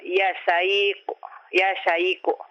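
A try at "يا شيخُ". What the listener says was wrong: Ya syaikhu. Mana itu kha. Kha. Kha. Khu. Ya syaikhu.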